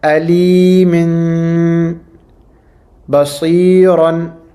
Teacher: Whenever a tanween is followed by a ba, we do an iqlab, and what we do is that instead of an in sound, instead of a noon sound, we pronounce a meme sound at the end of that tanween.